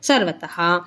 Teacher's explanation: ಅರ್ಧ ಚ ಹೇಳ್ಬಿಟ್ಟು ಆಮೇಲೆ ಚದೀರ್ಘಕ್ಷರ ಮಹಾಪ್ರಣದ ಚನ್ನ ಒತ್ತಿ ಹೇಳಬೇಕು ಆಚಾದಿತಂ ಸರ್ವತಹ ವಿಸರ್ಗ ಇದೆ ತ ಮುಂದೆ ಅದಕ್ಕೆ ಹ